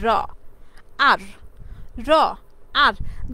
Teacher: The tip of the tongue মানে আমাদের জিহ্বার ডগা কিংবা আগা আর্টিকিউ আর্টিকিউলেটস with the back of the alveolar ridge. আমাদের অ্যালভিউলার রিজের যে পিছনের অংশটা আছে এই পিছনের অংশের সাথে কি করে? ধাক্কা দেয় বা পিছনের অংশে গিয়ে অংশের সাথে গিয়ে লাগে। তখন যে সাউন্ডগুলো উৎপন্ন হয় এই সাউন্ডগুলোকে মূলত পোস্ট অ্যালভিউলার বলা হয়।